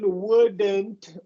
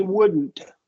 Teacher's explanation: voice the D keep your tongue in place and then make the n Sound